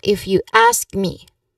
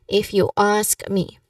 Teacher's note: Now, so basically the pronunciation here should flow naturally like everyday speech because this is conversational English, obviously. Now, the emphasis here is on the word ask.